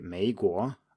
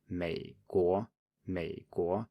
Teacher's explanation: you should be just down on the first one. It should be a low tone. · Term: third tone